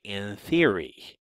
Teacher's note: when I say N, I don't actually produce it as an alveolar N, but rather interdentally. So I'll say in theory. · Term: dentalized nasal